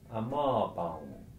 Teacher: The letter M at the end of a word is said to be nasalised.